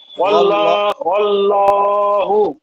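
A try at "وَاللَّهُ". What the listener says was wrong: এই যে লটা অনেকটা লা এর মতো হয়ে যায় কিছুটা, হয়তো দেখা 90% ল ঠিক আছে, 10% লা এর মতো আসে। লা হবে না, ল।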